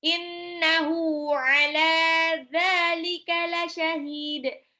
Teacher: Hak domirnya itu panjang 2 harokat ketemu sama ain. Nah, itu mad silah qasirah.